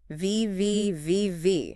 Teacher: Top teeth must touch the bottom lip. Labiodental.